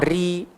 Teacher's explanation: Ra ni hanya jadi nipis bila berbaris bawah.